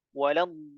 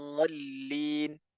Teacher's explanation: ya kemudian huruf dad huruf Dad di mana makhrajnya huruf dad huruf d itu ada di Sisi lidah samping-samping lidah ya tempelkan di gigi geraham baik yang kanan maupun yang kiri